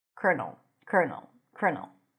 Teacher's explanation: primary stress is on the first syllable